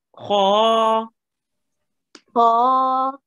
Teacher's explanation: So you rounded your mouth with the kha. That means it's a thick letter.